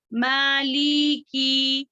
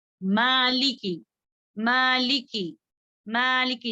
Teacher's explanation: مالکی مالکی مالکی، جی یہ بھی مد اصلی ہے. میم کے اوپر مد اصلی ہے، اس کو 2 حرکات کے برابر کھینچیں گے لیکن لام اور کاف میں کھینچیں گے نہیں